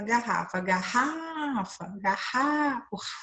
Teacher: o ra foi a sílaba que se estendeu. Então, essa é a sílaba tônica